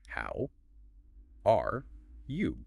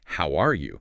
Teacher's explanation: with a natural friendly rising intonation at the end, maybe with a slight peak on how are you with the pitch going up noticeably.